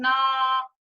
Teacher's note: ये ध्वनि हमारी कहाँ से निकल रही है, नाक के माध्यम से निकल रही है, तो इसका उच्चारण स्थान हमारा हो जाएगा नासिका।